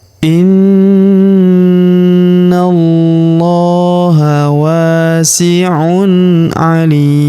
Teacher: Huruf li kita panjangkan 2 emp atau en harakat karena di depan huruf li terdapat ya sukun. Sebelum huruf pemberhentian dan huruf pemberhentian huruf nun tanwin un kita sukunkan atau kita matikan.